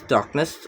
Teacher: The stress is on the first syllable dark and the n does not shift stress.